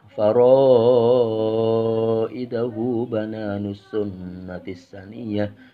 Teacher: Faraidahu ini mad sila qasira, panjangnya 2 harokat, diplamain.